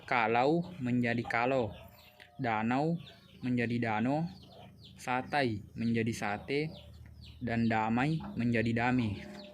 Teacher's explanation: terjadi pada bunyi vokal rangkap AI ke vokal tunggal bunyi E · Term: monoftongisasi